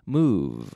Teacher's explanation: it doesn't sound like the be in English it sounds like an F with a vocal cord activated